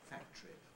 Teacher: i have a categorical compression in camera i have to say camera as two syllables